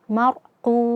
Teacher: ro sukun sebelumnya fathah sehingga ro-nya kita baca tafkhim tebal